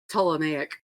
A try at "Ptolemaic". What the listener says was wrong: That one, the P is silent. Well, it makes sense because that's a Greek root word.